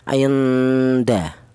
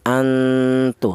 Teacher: samarnya lebih dominan daripada dengungnya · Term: ikhfa a'la